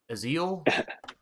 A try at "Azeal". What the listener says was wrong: you're pronouncing the S and it's not a s that's a z